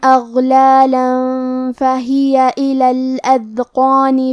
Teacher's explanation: غین ساکن ہے تو ہمیں غین کو ظاہر کرنا ہے اور ہم یہ حرف کو موٹی آواز میں پڑھیں گے